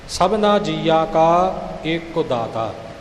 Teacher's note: ਇਕ ਤੇ ਜੋਰ ਆਵੇਗਾ